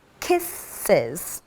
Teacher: the word kisses has 2 syllables because kiss ends with the sibilant S. Therefore, we add an extra is sound, an extra syllable, and it becomes kisses. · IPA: /ɪz/